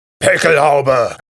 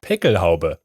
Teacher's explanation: the word actually ends on my favorite phonetic sound, the schwa